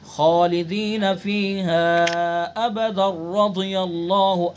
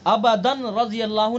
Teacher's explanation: ठीक है, अबदन रज़ियल्लाहु नहीं पढ़ेंगे, अगर वस्ल करेंगे तो अबदन रज़ियल्लाहु नहीं पढ़ेंगे, बल्कि दाल का रा में इदगाम करेंगे, तनवीन का रा में इदगाम करेंगे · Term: इदगाम ताम